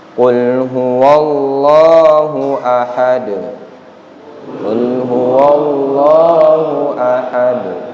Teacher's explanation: Perhatikan di dal, yaitu huruf terakhir, itu hukum bacaannya adalah qalqalah. sehingga dipantulkan dengan cepat. Jangan lambat, jangan ahad, jangan, karena tidak bertasydid.